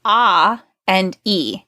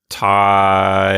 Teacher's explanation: the tongue moves up um from the ah sound to the e sound